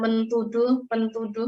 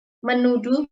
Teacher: Teh di sini tehnya menjadi hilang ya, bukan mentuduh, pentuduh ya, tapi menuduh, penduh ya. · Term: hilang ya tehnya